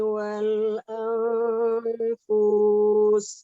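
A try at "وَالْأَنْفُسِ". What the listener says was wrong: Dibaca pendek. Wal anfus.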